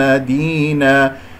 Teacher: كسرة الدال، ونقف على مد العوض بمقدار حركتين